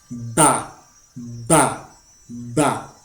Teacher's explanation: Por ejemplo, la letra B en árabe, que equivale a la B en español, para yo poder pronunciar la letra B, necesito abrir la boca después de pronunciarla, o sea, pronuncio la B y inmediatamente después abro la boca para explotar el aire que viene desde mis pulmones